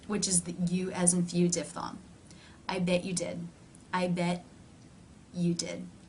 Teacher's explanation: up into position for the tea I bet you did but rather than releasing air through the teeth the mouth simply moves in to the next sound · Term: no release